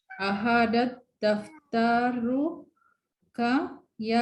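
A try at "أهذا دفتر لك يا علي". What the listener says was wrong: Laka, ada lamnya di sini. Ahadat daftaru laka.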